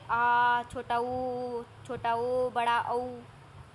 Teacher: जिन स्वरों के उच्चारण में जीवा का पश्च भाग ऊपर उठता है, पश्च स्वर कहलाते हैं।